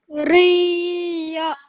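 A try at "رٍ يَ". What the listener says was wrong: Okay, just try produce more of a nasal sound in between. Riya.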